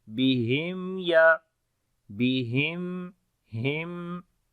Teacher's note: After the meme sakin there is ya, we make izhar shafawi, the clear sound of meme, and also the tawassut quality on the meme, like the continuation of your sound.